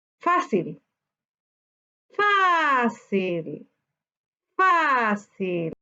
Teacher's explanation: Su sílaba tónica está en la penúltima sílaba, por tanto es una palabra grave.